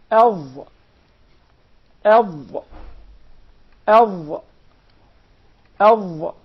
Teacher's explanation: The Dha comes from the tip of the tongue and the bottom edges of the two top front incisors.